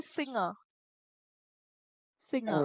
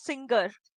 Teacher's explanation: N and G make one sound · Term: NG sound